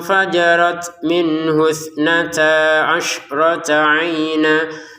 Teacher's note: Disempurnakan samarnya 2 harokat. Fajarat, untuk taknya ada letupan nafas sedikit ya